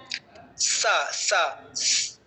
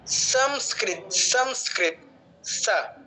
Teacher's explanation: একদম দাঁতের গোড়ায় জিহ্বার অগ্রভাগটা লাগবে। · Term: দন্ত স